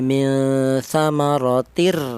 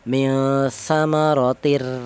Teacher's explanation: huruf nun yang mati dilebur ke huruf ro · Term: idgham bila ghunah